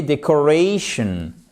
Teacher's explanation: là vous avez un accent tonique sur l'avant-dernière syllabe